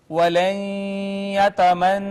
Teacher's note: نون مشدد پہ ہم نے غنہ کیا